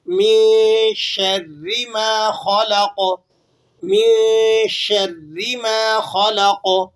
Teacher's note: خا کو پر پڑھنا ہے آپ نے، موٹا پڑھنا ہے، ٹھیک ہے۔ اسی طرح قوف کو بھی آپ نے موٹا پڑھنا ہے، لام کو آپ نے موٹا نہیں کرنا، تو اور قوف کو آپ نے ہلانا بھی ہے کیونکہ قوف ساکن ہے اور آخر میں آ گیا ہے تو اس کو آپ نے ہلانا بھی ہے، اس لیے کہ قوف حروف قلقلہ میں سے ہے۔